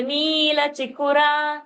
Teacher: Ni is long. Chikura, chi and ku are short.